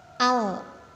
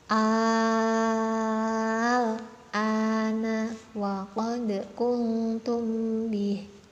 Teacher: alnya ini dibaca panjang 6 harokat. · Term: mat lazim mukhaffaf kalimi